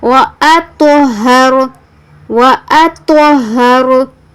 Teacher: واطہر طا پر تفخیم بھی ہے اور طا پر قلقلہ بھی ہے, اور را پر تفخیم ہے یعنی را کو پر پڑھنا ہے.